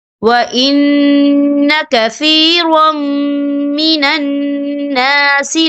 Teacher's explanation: یہ دیکھیں وَإِنَّ، یہاں نون مشدد ہے تو یہاں پر غنہ ہوگا، اور آگے دیکھیں کثیرم، را کے پر تنوین ہے، تنوین کے بعد جو ہے میم آ رہا ہے، اور میم جو ہے حروف یرملون میں سے ہے، تو یہاں پر ادغام ہوگا، تو ہم اسے غننے کے ساتھ پڑھیں گے